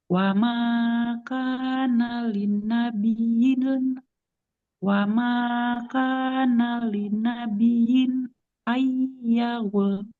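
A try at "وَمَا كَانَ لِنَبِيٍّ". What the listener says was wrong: Wa ma kana linabiyyin. Huruf ya-nya harus lebih mengalir lagi suaranya.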